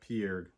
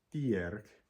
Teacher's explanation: the plural of the noun is made by fricativizing that onset consonant, so that piarg, buffalo, has a plural thiarg.